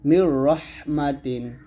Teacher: নুন সাকিনের পর র আসছে এখানে আমরা মিলাবো তবে গুণনা করবো না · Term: ইদমা বেলাগুন্না